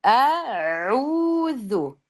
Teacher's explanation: Ayn qolib ketyapti keyin ayndan keyin vav borda mad ikki harakat. Mad tobiiy ovozni ikki harakat uzatish keraku.